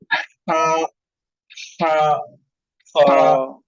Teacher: एक स्टीम सा निकलेगा जब आप हा का प्रोनाउंस करेंगे।